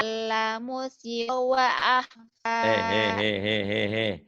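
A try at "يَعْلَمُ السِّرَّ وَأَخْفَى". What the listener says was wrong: Ditasdid. Ya'lamus sirra. Ya'lamus sirra wa akhfa. Ya'lamus sirra wa akhfa. Ya'lamus sirra wa akhfa. Ya'lamus sirra wa akhfa. Ya'lamus sirra wa akhfa. Diulang-ulang tasdidnya.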